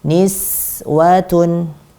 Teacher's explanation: Kita rokhawahkan sinnya, kita panjangkan alirannya dan kita tipiskan.